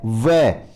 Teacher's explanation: वह का उच्चारण स्थान दंत ओष्ठ, दांत और ओष्ठ होंगे